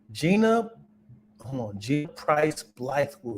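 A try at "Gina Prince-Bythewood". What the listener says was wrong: It's not Price. Gina Prince Blythewood.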